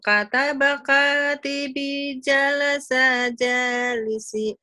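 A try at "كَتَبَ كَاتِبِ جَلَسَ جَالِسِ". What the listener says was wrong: Nggak boleh panjang. Jadi gitu, nggak boleh. Kalau membiasakan memanjangkan di ujung yang pendek, nanti ke Quran berefek.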